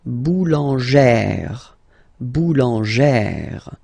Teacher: plus this accent grave, you pronounce it like E, really open E sound. Okay, so boulanger, boulanger, and then feminine form, boulangère, boulangère.